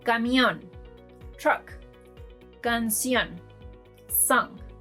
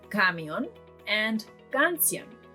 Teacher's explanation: These two words end with an N and the last syllable is being stressed.